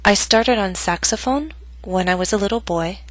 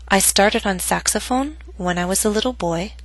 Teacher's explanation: note that my voice went down on boy but not to its lowest pitch because the statement is not complete